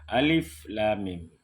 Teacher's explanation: Alif lam 6 harkat, mim didengungkan ya. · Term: dipanjangkan 6 harkat